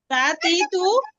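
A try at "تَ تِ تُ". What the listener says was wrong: হ্যাঁ, আপনি তা বলছিলেন শুরুতে। তারপরে একটু টান হয়ে যাচ্ছে সামান্য, হ্যাঁ। এই যে বলছেন না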